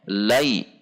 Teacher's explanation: tidak boleh dibaca Lae harus sempurna i-nya